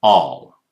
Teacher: Americans say all, more closer to ah.